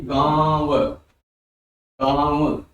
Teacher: आपका मुह भी हिल रहा है और आप नाक के बल से भी बोल रहे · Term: अनुनासिक